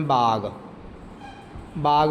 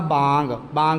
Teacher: ਜਿਨਾਂ ਧੁਨੀਆਂ ਨੂੰ ਉਚਾਰਨ ਲਈ ਫੇਫੜਿਆਂ ਚੋਂ ਆਉਂਦੀ ਹਵਾ ਨੂੰ ਮੂੰਹ ਚੋਂ ਬਾਹਰ ਕੱਢਣ ਦੇ ਨਾਲ ਨਾਲ ਕੁਝ ਹਿੱਸਾ ਹਵਾ ਦਾ ਕੁਝ ਹਿੱਸਾ ਨੱਕ ਰਾਹੀਂ ਵੀ ਬਾਹਰ ਆਵੇ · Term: ਨਾਸਕੀ ਧੁਨੀਆਂ